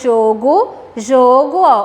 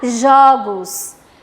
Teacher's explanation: um timbre fechado no singular e um timbre aberto no plural